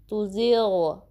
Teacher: ला, इसको भी 2 count stretch करना है, माउथ को ओपन करना है सही से। तुज़िग़, ग़ाइन में ख़राश की आवाज़ नहीं आनी चाहिए, जैसे खौ की होती है, और गा की साउंड नहीं आनी चाहिए